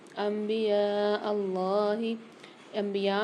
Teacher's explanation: انبیاء اللہ انبیاء میں یہاں پر چھوٹی سی میم بنی ہوئی آ رہی ہے نون کے ساتھ، یہاں پر اقلاب والا قاعدہ ہوگا، یعنی یہاں پر ہم غنہ کر کے پڑھیں گے پچھلے حرف کو میم کے ساتھ ملا کر، جیسے الف کو میم کے ساتھ ملا کر غنہ کر کے پڑھیں گے۔